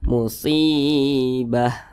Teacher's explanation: Di belakangnya ada huruf yang berharokat kasroh, mau huruf apapun itu, kalau dia berharokat kasroh dan posisinya itu tepat berada di belakang huruf ya sukun, pasti dibaca panjang. Maka huruf shad dibaca panjang. Ini namanya mad tabi'i, panjangnya 2 harokat atau kira-kira 2 ketukan.